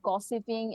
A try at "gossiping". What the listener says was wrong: Gossiping. So it sounds like she's saying gossiping. Again, many candidates from Bangladesh have problems with the p sound, that they make it sound like a f. Gossiping, gossiping, gossiping. So p is not the same as f. Again, actually missing that ch sound.